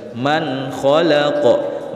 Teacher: nun sukun dibaca jelas tanpa berdengung